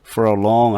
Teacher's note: for a long 할 때 R자 거의 없어지다시피 하고 그냥 중성모음으로 바뀌는 것 같아요